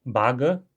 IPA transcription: bagə